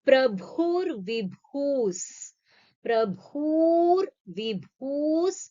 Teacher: Bhu is a mahaprana and also dirgham.